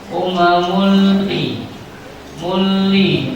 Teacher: dibaca suara tanwin berubah menjadi lam sukun